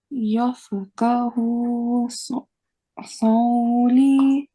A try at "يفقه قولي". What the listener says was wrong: It's qaf, so قولي.